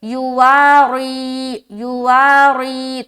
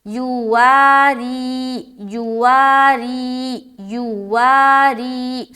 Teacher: اچھا، ری میں بعض اوقات را کو لوگ موٹا کر دیتے ہیں، تو یہاں پر را موٹا نہیں ہوگا بلکہ باریک پڑھیں گے